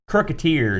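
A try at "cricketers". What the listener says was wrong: Every time you say cricket, it sounds like crooked.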